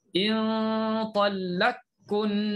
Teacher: Kalau nak idgham, in talaqkunna, masukkan qaf dalam kaf